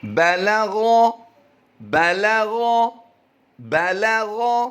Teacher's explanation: غ کی ادائیگی پر کریں گے، حروف مستعلیہ سے ہے